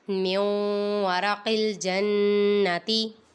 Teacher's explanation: یہاں پہ نون ساکن کے بعد حروف یرملون میں سے واو آ رہا ہے، ادھر ادغام ہوگا، ادھر گنہ کریں گے۔